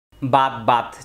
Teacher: তা এর উপরে জজম হলে শেষের দিকে একটু বাতাস হবে